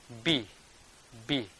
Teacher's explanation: when we pronounce B, lower lips and upper lip touches each other.